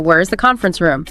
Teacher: your voice goes down on room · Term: falling intonation